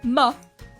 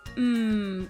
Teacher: when you say ma it puts a uh at the end